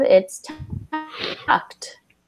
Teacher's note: for ED words, it's usually just sounds like a T. So it's not an extra syllable.